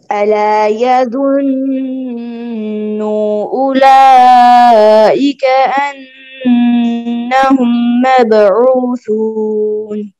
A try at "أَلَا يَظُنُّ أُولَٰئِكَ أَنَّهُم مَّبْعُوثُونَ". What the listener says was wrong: یظن کے نون کی پیش لمبی ہو گئی ہے آپ سے، پھر پڑھیے.